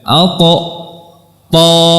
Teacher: dari ujung lidah bertemu dengan pangkal gigi seri atas, bukan dari langit-langit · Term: huruf ta